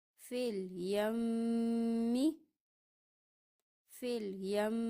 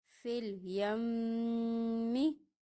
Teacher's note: میم مشدد ہے، اس پہ غنّہ ہو رہا ہے